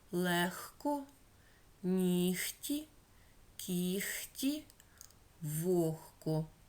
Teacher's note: Г уподібнюється до х. В таких словах легко, нігті, кіхті, вогко.